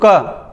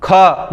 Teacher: मतलब महाप्राण मतलब इनको बोलने में ज्यादा हवा निकलती मुंह से। मैं बोलूँ क नॉर्मल, ख ज्यादा हवा निकलेगी